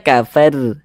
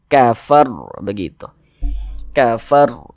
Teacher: huruf roh sukunnya ini dibaca tebal, dibaca tabkhim, sehingga pangkal lisan kita naik terangkat ke atas ketika kita mengucapkannya. Tebalkan huruf rohnya.